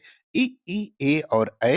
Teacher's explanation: जिनके उच्चारण में होठ गोलाकार या वृत्ताकार की जगह जो है वोह फैल जाता है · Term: प्रसत स्वर